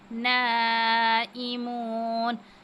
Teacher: الف پر مد ہے، اس کو بھی 5 الف کے برابر کھینچیں گے